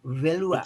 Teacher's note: saya temukan itu bahwa bahasa Toraja ada bilabial frikatif.